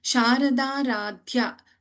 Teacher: see in the second line, Sharada Radhya. Sharada, the first da in Sharada is Alpa Prana.